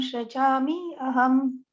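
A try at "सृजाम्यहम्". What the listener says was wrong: goes together. May I just remind you, it's not Shrichami Aham, but Shrichamyaham.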